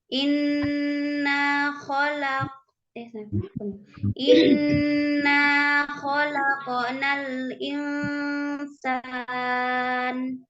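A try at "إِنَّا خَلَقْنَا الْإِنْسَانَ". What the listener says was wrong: Jangan dijeda ya, mengalir.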